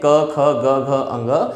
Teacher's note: क वर्ग के जितने भी व्यंजन होते हैं, क, ख, ग, घ, अंग प्लस इसके अलावा ह, ये सभी कंठ से उच्चारित होने वाले व्यंजन होते हैं।